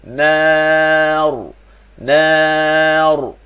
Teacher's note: Ra tu bila kita waqaf pada ra tu wajib baca tebal.